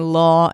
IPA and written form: lɔː (Law)